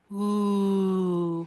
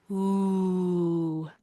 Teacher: our tongue is high and back. Ooh. Also, you can see the magenta here signifies that our lips are rounded and extended.